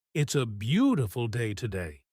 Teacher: If the video says, "It's a beautiful day today," you should copy exactly how it's said. The speed, the rising tone on beautiful, and the happy feeling in the voice.